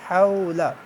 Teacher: واو حروف لین میں سے ہیں، حروف لین کی پہچان یہ ہے کہ واو اور یا ساکن سے پہلے زبر آتی ہے، اسے نرمی سے ادا کرتے ہیں۔ اور حا حروف حلقی میں سے ہے، حلق سے ادا ہوگی۔